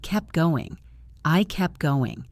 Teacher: The T in kept disappears.